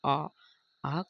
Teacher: खोलना पड़ जाए वहां पर विपरीत स्वर होता है जैसे आ आ का उच्चारण करने के लिए हमारे मुख को लगभग पूरा खोलना पड़ता है